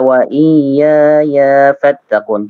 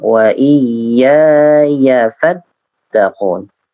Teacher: Ya yang kedua, untuk ya yang kedua tidak dipanjangkan